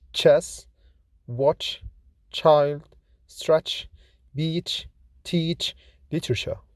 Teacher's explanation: Ch is voiceless, fortis, palato-alveolar, affricate, like in chess, watch, child, stretch, beach, teach, literature.